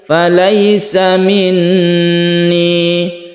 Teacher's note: panjangnya belakangnya cuma satu alif saja, disebut dengan mat tabi'i